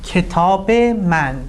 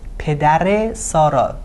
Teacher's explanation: It's connecting words by a short sound eh. · We need to connect these words and we do it through a short sound of eh: